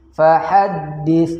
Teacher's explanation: fahaddits itu hukumnya adalah fa berbaris sukun, maka kita baca dengan bacaan yang hamas, yaitu mengeluarkan nafas atau angin dari mulut kita